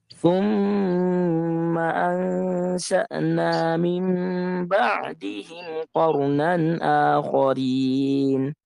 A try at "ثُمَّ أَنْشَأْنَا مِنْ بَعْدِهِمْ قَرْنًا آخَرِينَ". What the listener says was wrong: لا تقلقي الراء، قرنا آخرين.